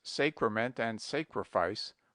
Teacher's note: he invariably says Sacrament and sacrifice with a very long a